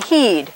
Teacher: it very clear your lips are in about this position and your tongue is high up in your mouth almost touching the roof of your mouth and then it comes down like this at the back so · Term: vowel E